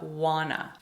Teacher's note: we want to, becomes want ta, but we reduce that even further to wanna.